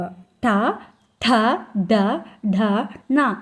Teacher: తాలు చివరి భాగం స్థానం మడత వేసిన నాలుక కొన కరణంగా కలిగినవి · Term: మూర్ధన్యాలు